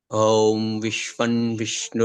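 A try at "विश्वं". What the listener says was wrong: Not Vishwan. You're doing Vishwan. Vishwam. Vishwam.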